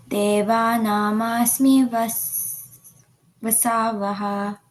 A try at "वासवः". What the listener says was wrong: Vasavaha. First A is longer.